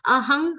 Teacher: Aham ha anuswar will be pronounced like ng.